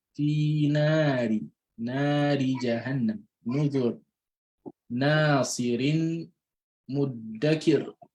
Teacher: you will pronounce the Ra with Tarqeeq, with an empty mouth, or with a light pronunciation.